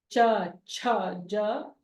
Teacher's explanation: tongue touching the palate at the front of the palate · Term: taluhu